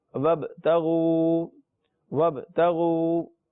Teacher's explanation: تو نون کو تا سے ملائیں گے تو بنے گا یا ایہا الذین آمنوا اتقوا اللہ، نون واو تا پیش نت، تا زبر تا، نت، یا ایہا الذین آمنوا اتقوا اللہ وابتغوا، غین واو پیش غو، وابتغوا، با حروف قلقلہ میں سے ہے اس لیے آواز تھوڑی سی لوٹنی چاہیے۔ وابتغوا، وابتغوا الیہ الوسیلۃ، الیہ الوسیلۃ، سین یا زیر سی آپ کو یاد ہوگا یہ یا مدہ ہے۔